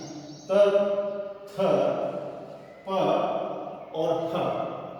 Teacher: जब अपन क का उच्चारण करते हैं, ख का उच्चारण करते हैं, च का उच्चारण करते हैं, स का उच्चारण करते हैं, ट का करते हैं, ठ का करते हैं, त, थ, प और फ, यहाँ जब उच्चारण होता है तब हमारी स्वर तंत्रियां हैं वह कंपन नहीं करती हैं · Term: अघोष व्यंजन